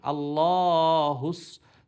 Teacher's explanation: হুস সৎটা মোটা উচ্চারণ হবে